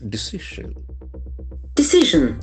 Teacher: The accent falls on the second syllable.